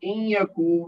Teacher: نون ساکن کے بعد یا ہے تو یہ ہوگا ادغام ما غنہ۔ کاف کے بعد واو ساکن ہے، اس سے پہلے کاف پر پیش ہے تو یہ بنا واو مد، اس کو دو حرکت تک کھینچ کر پڑھیں گے۔